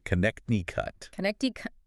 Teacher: The middle C is silent. 4 syllables with the stress on the second syllable.